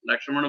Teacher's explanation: लक्ष्मण बोलने में तो आपको जीभ मोड़नी पड़ेगी क्ष बोलने के लिए।